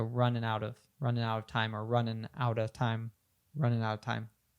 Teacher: And she said a full running here, but Americans and many Brits would often say this dropping the G, so we'd say running instead of running. And we would even have that N at the end of running connect to the out of.